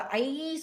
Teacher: ஐ சொல்லும்போது அது ஈ அசையில முடியும்